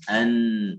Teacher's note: Nun dari ujung lidah min tahtiha di bawah lam.